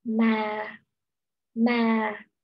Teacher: Voice starts fairly low, range 2, and gradually falls. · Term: falling